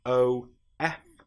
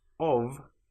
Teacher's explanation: But in this case the f is pronounced like a v. If we have o ff that then is nonvoiced but the f in of is voiced.